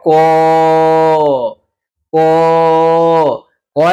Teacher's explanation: ক যদি উচ্চারণ করি দেখো ক এর সাথে অ চলে আসে